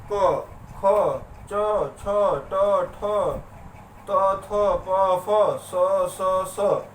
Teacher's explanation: मतलब कहीं से भी बहुत ज्यादा प्रकंपन पैदा नहीं हो रहा है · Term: अघोष